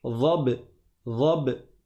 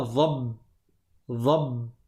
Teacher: le ba, il y a une qalqala. Je fais un soukoun, mais je laisse rebondir.